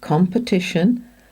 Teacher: it's the com that is stressed, not the p, and the E is the schwa